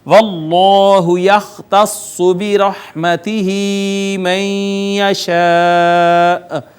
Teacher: جلالت کا ما قبل مفتوح ہے، لہٰذا اس کو مفخم پڑھیں گے